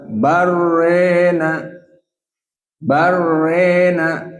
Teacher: Jadi tidak dibaca bal ro, tapi bal. Kemudian ro-nya dalam keadaan al-imalah al-kubro. Dibaca barrena, barrena.